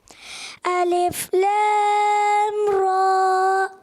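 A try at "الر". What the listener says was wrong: یہ مد کمزور کر دی.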